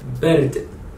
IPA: bɛrd